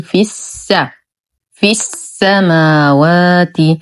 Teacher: إذن تلاقى ساكنين فحرف المد لا يثبت وإنما يحذف منعا من التقاء الساكنين